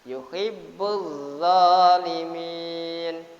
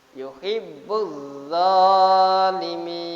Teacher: Lamnya lam ta'rif berjumpa dengan za atau berjumpa dengan huruf yang disabdu pasti lam ta'rifnya itu dibaca idgham. Jadi namakan idgham samsi.